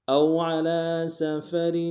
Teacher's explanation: را کے نیچے تنوین ہے، غنہ کریں گے، را کو باریک ادا کریں گے